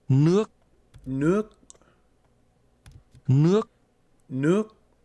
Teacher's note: Water is pronounced with a rising tone.